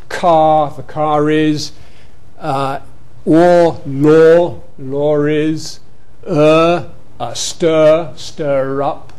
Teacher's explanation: And that is the group, if you remember, that gives you intrusive R and linking R when they come at the end of a word. All these vowels in RP want an R after them at the end of the word.